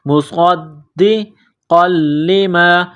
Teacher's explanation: صاد میں سیٹی کی آواز پیدا کرنی ہے، صاد کو موٹا کرنا ہے